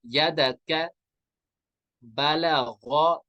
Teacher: इस गैन यहाँ पे पुर होगा, ये हुरूफ मुस्तालिया है।